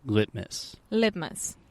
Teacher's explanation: the only difference between a true t and a stop T is with the stop T I am not aspirating and aspiration is just a complicated way to say I am